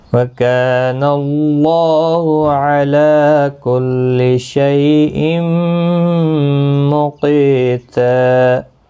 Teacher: اور وقف کی صورت میں یہاں پر وقف بالابدال ہوگا۔ دو زبر کو بدل کر ایک زبر کے ساتھ وقف کریں گے، الف مدہ بنے گا، ایک الف کی مقدار کے برابر کھینچ کر پڑھیں گے